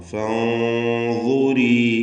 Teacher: സാക്കിനത്തായ നൂൻ ശേഷം ളാഇ ഇഖ്ഫാ ഹഖീഖി നൽകി മറച്ച് മണിക്കുക. മണിക്കലിലും തഫ്ഖീം വേണം. എന്നിങ്ങനെ തടിപ്പിച്ചുകൊണ്ടുള്ള ഉച്ചാരണം.